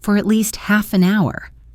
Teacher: The words at and an are unstressed. At least sounds like at least with the t link into the L.